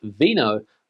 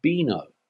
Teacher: the letter V here in Spain is pronounced like a soft B for example this word here is not pronounced Vino but boino